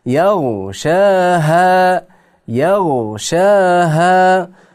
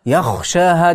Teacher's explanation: g'o harfni xo harfga aylantirib o'qiydi, bu xato